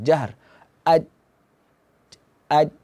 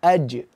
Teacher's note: huruf Jim itu dia hurufnya tidak ada angin